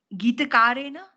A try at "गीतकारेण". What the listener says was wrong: correct गीतकारेण णकार not nakara गीतकारेण ण okay गीतकारेण